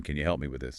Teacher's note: Can you reduces to can you and help me often flows together maybe like help me with a very soft P